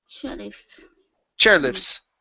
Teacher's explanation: because the t is trapped between two other consonants the f and the s the t disappears.